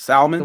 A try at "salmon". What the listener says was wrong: No, it's salmon. It's salmon. L is silent. it's salmon.